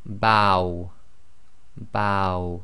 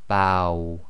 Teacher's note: So you say ba and then try to effectively say the waw. So you end up with a round lips making a small round circle. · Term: diphthongs